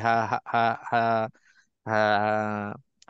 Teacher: Ha ni tetap kita nak kena jaga supaya dia keluar di tengah-tengah halquum